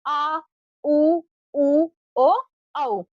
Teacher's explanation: जीभ का पिछला भाग ऊपर उठता है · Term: पसच स्वर